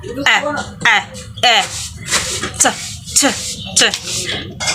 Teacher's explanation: the vocal cords stop vibrating, causing the T sound to be a result of the placement of the tongue behind the teeth and the flow of air